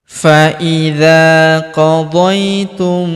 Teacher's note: Faidza huruf dza kita panjangkan dua harakat karena terdapat alif di depannya